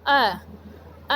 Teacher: अ बोल के देखिए, आपकी जीभ का जो बीच का हिस्सा है वो सक्रिय रहता है। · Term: मध्य स्वर